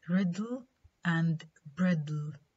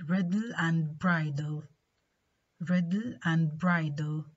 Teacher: da is released laterally when it's immediately followed by la. Yeah, because la is a lateral sound, and we've just discussed lateral release, right?